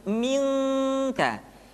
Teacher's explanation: Min salsalin, ketemu kaf maka dominan kepada huruf ang